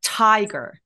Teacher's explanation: 앞에 읏을 머물고 터져 나오는 소리예요